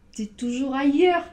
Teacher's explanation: On a comme la sensation qu'il y a un I, mais en fait, on l'entend pas. On entend ye et heure après.